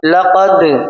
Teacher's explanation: बहुत गौर से तो सुने, यज अल, लाम जबर ल, काफ दाल जबर कद, लक़द। लाम हुरूफ क़लक़ला नहीं है इसलिए इसकी आवाज नहीं लौटेगी, लेकिन दाल हुरूफ क़लक़ला इसकी आवाज हम लौटाएंगे, लौटती हुई महसूस होगी हमें